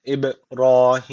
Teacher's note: cezimli b var Yani bu ne demek kalkale tecvid var demek ne yapacağız hafif bir dudaktan vurulacağı